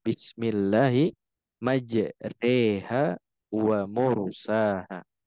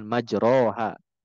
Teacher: Memiringkan suara antara fathah dan kasroh. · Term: imalah